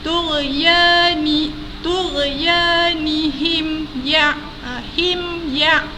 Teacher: Mim mati atas ada tanda sukun, jumpa dengan huruf ya, maka terjadilah sekali lagi hukum izhar syafawi, yang mana bacaan mim mati itu perlu dijelaskan tanpa dengung